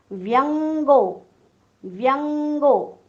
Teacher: हा ङ जो उच्चार आहे ना, हा क ख ग घ ङ मधला उच्चार आहे